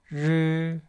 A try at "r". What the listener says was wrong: Did you roll your tongue or not? You have to.